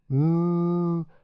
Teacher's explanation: a nasal sound coming from the nose and held for about two counts